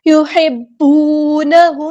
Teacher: میم ساکن پر اظہار شفوی ہو رہا ہے، ہم یہاں پہ ٹائم نہیں دیں گے